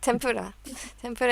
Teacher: the consonant where your lips touch then it's an M the pronunciation is an m